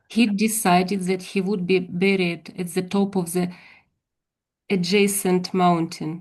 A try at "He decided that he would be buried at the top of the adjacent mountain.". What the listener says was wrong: That's it. Spot on. That was perfect. Very good. Very good. Yeah, so buried and adjacent. You've got it.